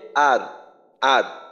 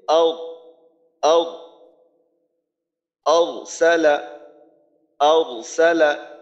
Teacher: যদি এইভাবে বলি আও আও সালা, তাহলে কিন্তু জিহ্বার গোড়া উপরের দিকে ওঠার মাধ্যমে আওয়াজটা মোটা হয়